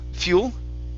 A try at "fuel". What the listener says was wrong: Okay, with an L. Fuel. Keep practicing the L. You want your tongue to touch the top of your mouth. L. Fuel.